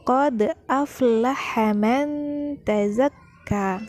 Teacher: Dal sukun termasuk salah satu huruf qalqalah, maka dibaca dengan dipantulkan